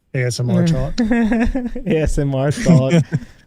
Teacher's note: With the creaky voice at the end of the phrase.